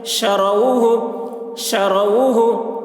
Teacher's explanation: کوثر، کاف واو زبر کو، واو ساکن سے پہلے زبر ہے، واولین ہوا، اس لیے واولین کو نرم آواز کے ساتھ جلد پڑھیں، معروف پڑھیں، مجہول آواز سے بچیں